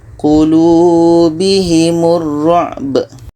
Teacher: Ba mati ini qalqalah, ada pantulan.